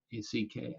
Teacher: you can feel the back of the tongue lift upwards